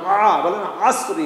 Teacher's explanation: আইন উচ্চারণ দেখেন আসরি গলার মাঝখান থেকে বলেন আ